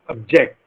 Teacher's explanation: object right but to indicate that obj ect is a verb we put stress on the second syllable and it is object